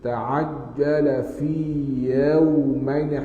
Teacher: jim tidak ada angin